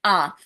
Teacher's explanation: जब भी आप आ बोलते हैं तो क्या होता है पूरा मुंह ओपन होता है